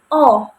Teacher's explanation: madia bawah dengan menggunakan lidah bagian belakang dan posisi mulutnya ini semi terbuka jadi kayak o begitu. · Nah, tetapi pada O ini posisi bibirnya itu semi terbuka tetapi mendekati semi tertutup begitu. Jadi ee semi terbuka tetapi agak sedikit tertutup begitu. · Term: vokal O